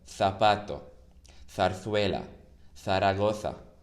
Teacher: The Z sound doesn't exist in Spanish. It's always a th, like the th from the verb think. So whenever you see a Z, it's always th.